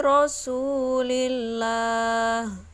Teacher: dikatakan lam jalalah tarqiq atau dibaca tipis karena terdapat pada lafadz jalalah yang sebelumnya didahului oleh lam yang berharakat kasrah